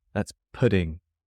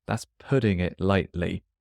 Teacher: the G disappears and the T's become more like D's.